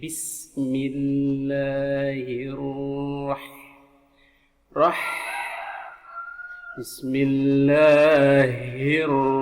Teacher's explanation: Ha-nya besar, disebut ha dada, ya di sekitaran dada.